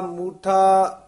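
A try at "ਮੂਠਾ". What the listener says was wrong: मूठा नहीं कह देना, इस नु मूठा दलैंकड़ नाल उचारण करना, माया मूठा चेतस नाही,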